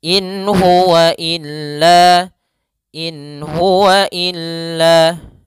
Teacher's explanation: [Musik] wagahu inua Kemudian pada lafal inua ada bacaan izhar yaitu nun sukun bertemu dengan huruf ha maka Suara nunnya jelas